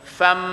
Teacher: tanwin fatatin bertemu dengan huruf mim, maka bunyinya fam. Jangan kata pam.